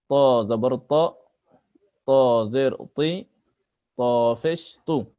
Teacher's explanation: ত জিবার আগা সামনের উপরের দাঁতের গোড়া থেকে ত অক্ষর কণ্ঠস্বরকে মোটা করে পড়তে হয়। ত অক্ষর কণ্ঠস্বরকে মোটা করে পড়তে হয়।